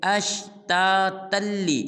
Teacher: تا کو آگے لام مشدد کے ساتھ ملائیں گے